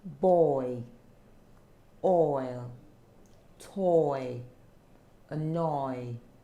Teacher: So this diphthong is oi. The long O sound and the E sound is set together.